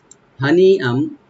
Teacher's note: হাটাকে open রাখবেন, গলার শেষ থেকে আসবে। নি এখানে মধ্যে মুত্তাসিল, চার আলিফ পর্যন্ত টানতে পারবেন।